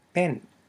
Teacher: we have the unaspirated p and that short e, which is in medial position because it's in between the unaspirated b and the n sound, 2 consonants.